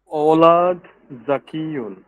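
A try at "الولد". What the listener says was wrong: এখানে আল হবে, হ্যাঁ, আল ওয়ালাদ।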